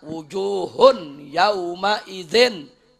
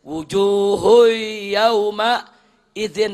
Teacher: udah enggak ada idghamnya tuh